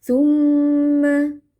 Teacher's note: Tumma mim tasydid kita baca dengan dengung panjang.